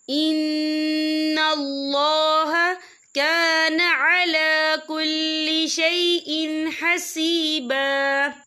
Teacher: ہم یہاں اظہار کریں گے، ہم اسے بنا غنّے کے پڑھیں گے